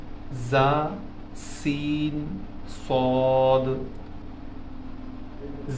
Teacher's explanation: ان کے مخرج سے آواز میں ایک خاص قسم کی تیز سیٹی جیسی کیفیت پیدا ہوتی ہے۔ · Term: حروف صفیریہ